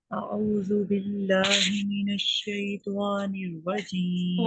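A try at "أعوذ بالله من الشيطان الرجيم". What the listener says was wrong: त्वा नहीं करना, देखिए त्वा को होंठ गोल नहीं होने चाहिए।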